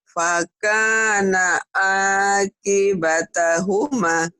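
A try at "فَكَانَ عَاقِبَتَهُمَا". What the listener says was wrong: Ma-nya panjang dikit lagi. Udah pinter tuh.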